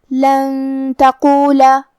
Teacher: تا حروف الاخفاء میں سے ہے اور اخفاء کا معنی ہے چھپا دینا تو ہم یہ نون کو چھپاتے ہوئے لیکن غنہ کے ساتھ یہ حکم کو ادا کریں گے · کلمت تقولا میں حرف القاف کو ہم موٹی آواز میں پڑھیں گے. آخری میں حرف اللام پہ زبر ہے لہذا ہم زبر ظاہر کریں گے.